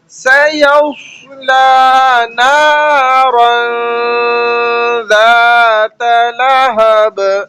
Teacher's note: سیصلا کا لام موٹا نہیں ہوگا، سادہ پڑھا جا رہا ہے